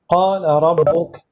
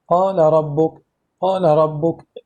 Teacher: نقول قال ربك اختلاس، قال ربك، ليس قال ربك إظهار ولكن اختلاس، الإدغام ولكن مع الاختلاس